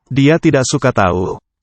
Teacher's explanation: The K seems to be dropped in tidak.